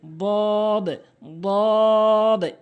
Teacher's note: জিহ্বার গোড়ার কিনারা উপরে মারির সঙ্গে লাগাবেন